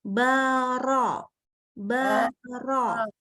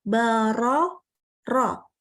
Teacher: Jadi memang harus dibaca ro-nya itu di dalam. Naikkan pangkal lidah supaya mendapatkan huruf yang tebal.